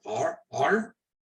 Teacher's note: the Germans will roll it in the back of their throat and say R, R.